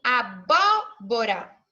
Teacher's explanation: esse primeiro bó nós falamos em mais forte e aí esse bode vai ser antepenúltima sílaba da minha palavra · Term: proparoxítona, sílaba tônica